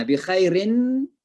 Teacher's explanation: Gunna, rin ketemu mim, itu namanya idgham, ya. Jadi dibaca dengan memasukkan suara n ke dalam mim.